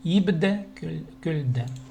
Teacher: Л и Б в данном случае это звонкие, да, поэтому у нас идет де.